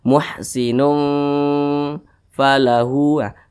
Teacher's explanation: di samping huruf Fa termasuk kepada huruf ikhfa Hakiki ausat nah jadi cara bacanya itu disamarkan kemudian juga didengungkan muhsinun falahu dengungnya itu dua harakat atau kira-kira dua ketukan didengungkan